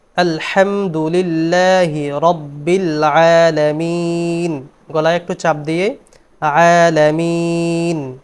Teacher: হরফটি হচ্ছে আইন, আলামিন, কণ্ঠনালীর মাঝখান থেকে উচ্চারিত হবে।